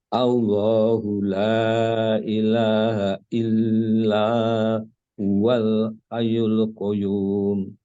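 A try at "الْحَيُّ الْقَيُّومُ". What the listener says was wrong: Qayyum. Monggo tasdidnya jangan lupa. Al huwal hayyul qayyum.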